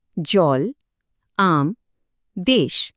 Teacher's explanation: প্রত্যেকটার শেষে ল, ম বা শয়ের মতো একটা ব্যঞ্জন ধ্বনি আছে, আর সেটাই উচ্চারণটাকে হঠাৎ করে থামিয়ে দিচ্ছে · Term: রুদ্ধ দল